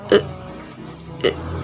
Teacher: Mulut itu agak tertutup dan lidah itu rileks di tengah.